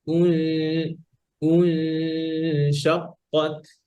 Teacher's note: ঠোঁট গোল থাকবে না গুণনা করার সময়, জাস্ট হামজাটা উচ্চারণ করার সময় ঠোঁট গোল হবে, আবার জায়গায় চলে যাবে।